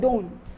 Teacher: जब हम don't को बहुत रैपिडली बोलेंगे तो हम t को मिस कर देंगे या t को कहीं हम स्किप कर देंगे like don't. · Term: elision